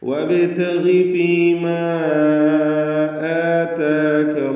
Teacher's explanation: വബ് എന്ന് വ്യക്തമാക്കണം എന്നർത്ഥം. വബ്തഗി ഗൈനിന് കുറഞ്ഞ തഫ്ഖീം കൊടുക്കുക, കസ്റായതുകൊണ്ട്